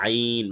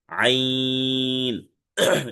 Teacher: আইন হচ্ছে চার আলিফ টেনে পড়তে হবে, আইন। গলা চেপে পাতলা আওয়াজে পড়তে হবে, অর্থাৎ কণ্ঠনালীর মধ্যখান চেপে পড়তে হবে